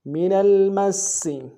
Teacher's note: سین کے اوپر تشدید ہے، زور دیں گے اور سین کی سیٹی باریک ہوگی